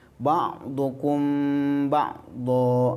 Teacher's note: Ini hukum mim sukun. Jadi mim sukun bertemu dengan ba disebut dengan bacaan ikhfa syafawi. Ikhfa itu artinya samar, syafawi bisa diartikan bibir. Jadi bacaan samarnya itu di bibir.